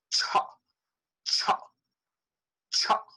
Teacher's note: when you are releasing the tongue you should expel a puff of air not later but at the same time